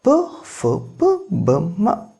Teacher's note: ಔಷ್ಠದ ಸಹಾಯದಿಂದ ಹುಟ್ಟಿದ ವರ್ಣಗಳನ್ನು ಔಷ್ಠ್ಯಗಳೆಂದು ಕರೆಯುತ್ತೇವೆ